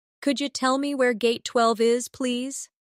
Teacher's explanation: In natural speech, could you sounds like could ya.